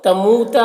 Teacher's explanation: واو مدہ ہے، ایک الف کے برابر کھینچ کر پڑھیں گے